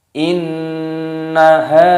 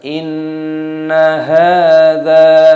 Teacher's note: Nunnya berharokat tasdid dan nunnya dibaca pendek. Bedakan antara dengung dan pendeknya. Bukan dibaca inna, bukan seperti itu.